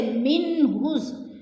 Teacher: آ گیا ہے تو ادھر اظہار ہوگا، اخفا بالکل نہیں ہوگا، غنہ نہیں کریں گے بلکہ لفظ کو ظاہر کر کے پڑھیں گے